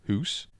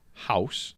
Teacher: From the flat oo became an ow sound, so you've got house from hoose.